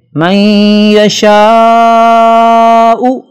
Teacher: یہدی من یشاء، نون ساکن کے بعد یرملون میں سے یا آ رہا ہے، لہذا نون کی آواز کو یا میں مکس کر کے پڑھیں گے اور یہاں غنہ بھی ہوگا جسے ادغام کہتے ہیں۔ من یشاء بڑی مد ہے، اسے لمبا کرنا ضروری ہے۔